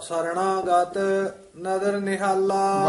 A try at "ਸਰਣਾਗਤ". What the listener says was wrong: ਵੱਖਰਾ ਵੀ ਨਹੀਂ ਕਹਿਣਾ ਨਾ, ਸਰਣਾਗਤ ਨਹੀਂ ਕਹਿਣਾ, ਇਕੱਠਾ ਤੇਜ਼ ਬੋਲਾਂਗੇ ਤੇ ਸਰਣਾਗਤ।